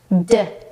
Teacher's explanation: the D sound does not require the tongue to come through the teeth